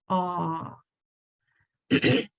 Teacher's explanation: So on the first one, O, your mouth makes a more of a pucker shape, O. But on this ah, your jaw is dropped so that that sound is deeper.